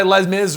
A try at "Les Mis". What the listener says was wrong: You don't have to pronounce the S. It's Les Mis. Just say Les Mis. Everyone refers to it as Les Mis.